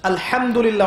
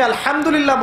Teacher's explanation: হায়ে হুত্তি, এটাকে বলে বড় হা। উচ্চারণ কোথা থেকে করতে হয়? মাঝখান থেকে।